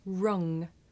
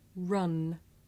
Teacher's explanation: ng is made at the back of the mouth and n is made behind the teeth.